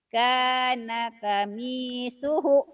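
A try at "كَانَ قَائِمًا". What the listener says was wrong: kana komi, bukan kami, komi suhu. Panjang. Komi suhu.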